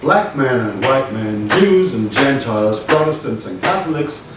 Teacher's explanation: have differences like in Morse code you've got dots and dashes we have strong stresses more or less regularly spaced